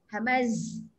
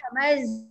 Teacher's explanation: Sofir ni dia bunyi tau, bunyi desir dia kuat ya